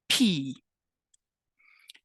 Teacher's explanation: you should feel a little puff of air against your hand when you say the P